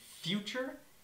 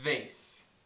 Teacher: a sound that's made by touching the bottom of the upper teeth to the lower lip in English there are two sounds made this way f as